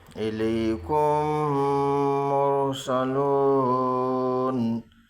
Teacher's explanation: الیکم مرسلون، میم ساکن کے بعد میم ہے اس لیے میم کو میم سے ملا کر گنہ کے ساتھ پڑھیں گے۔ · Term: ادغام شفی